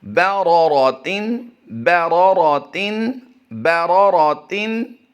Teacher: इसमें दो रा हैं और दोनों को हम पुर करेंगे क्योंकि उन पर ज़बर है। रा पर ज़बर की अलामत हो तो वो रा पुर पढ़ी जाती है।